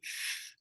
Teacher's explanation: it's unvoiced and your teeth are on your bottom lip